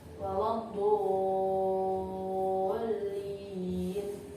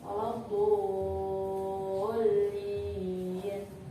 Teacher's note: Di situ ada mad bertemu dengan tasydid dalam satu kalimat, maka cara bacanya panjangnya 3 alif atau 6 harakat.